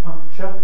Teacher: most people do indeed have a ch with a k present